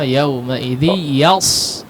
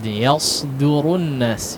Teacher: Perhatikan ya di huruf shad yang pertama, yauma idzi yas. Shad di situ ya, bukan sin. Coba lebih tebalkan lagi ya.